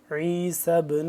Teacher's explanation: عین کو حلق کے درمیان والے حصے سے اور کھچاؤ پیدا کر کے